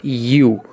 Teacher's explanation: U sound is not a vowel sound. It starts with Y sound.